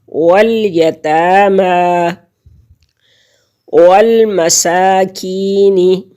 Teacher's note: وال لام ساکن واو کے ساتھ ملے گی، ایک ہی دفعہ پڑھی جائے گی. سین کے اوپر کھڑی زبر ہے، ایک الف کی مقدار اس کو کھینچیں گے. والمساکین. یا ساکن سے پہلے لفظ کے نیچے زیر ہے یعنی کسرہ ہے تو یہ یا مدہ ہے اور اس کو ایک حرکت کے برابر ہم کھینچیں گے.